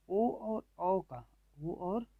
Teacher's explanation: ओ और औ का जो उच्चारण स्थान होता है वो कंठ और ओठ होता है या ओष्ठ होता है। ठीक। ओ दौ तो कंठ ओष्ठम, ओ दौ तो कंठ ओष्ठम, तो ओ औ का उच्चारण स्थान क्या हो गया, कंठ और ओठ हो गया। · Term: कंठोष्ठम